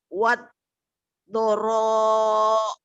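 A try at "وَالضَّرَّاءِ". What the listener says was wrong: Kurang tasdid. Waddarra. Waddarra. Ibu tolong ulang-ulang dulu ya tasjid ini ya.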